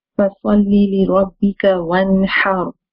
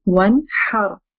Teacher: we are not stretching the Noon, or we are not making it a nasal sound. We are making it clear.